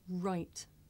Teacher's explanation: i make the r sound by making my lips come out and pulling my tongue back